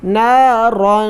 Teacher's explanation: را کو موٹا بھی پڑھنا ہے اور غنہ بھی کرنا ہے ، کیونکہ تنوین یعنی 2 زبر 2 زیر 2 پیش پر